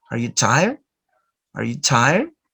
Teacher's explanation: the stress is in the word tire because it's an adjective